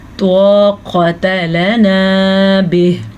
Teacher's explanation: طا پر ہے تا باریک قاف بھی پر ہے